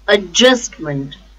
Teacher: the stress is on just